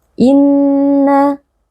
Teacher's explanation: Bacaan ini harus diucapkan dengan bunyi sengau yang dipanjangkan. · Hukumnya adalah wajibul gunnah, wajib dibaca dengan dengung yang dipanjangkan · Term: Wajibul Ghunnah, nun yang bertasydid